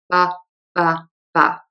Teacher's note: The B in English tends to have less aspiration, less as a puff of air than a lot of other languages. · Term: B sound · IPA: /b/